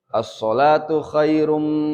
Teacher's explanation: As-sholatu as-sholatu khairum, ada mim bertasdid ya, khairum tanwin bertemu mim, idgham bi guna itu mah pakai guna